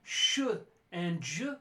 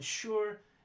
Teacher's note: sh and j, which are palatal fricatives